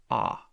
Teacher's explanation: We've got the low unrounded vowel, which is ah.